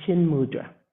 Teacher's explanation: when we have the T and the M, chit mudra together, because those are both Sanskrit words, it becomes an N sound.